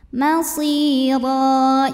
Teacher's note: Huruf ra dihukumi atau dibaca secara tafkhim ya, karena berbaris tanwin fathah, maka ra ditebalkan.